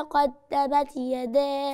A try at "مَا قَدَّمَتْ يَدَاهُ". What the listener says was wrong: فين الهمس؟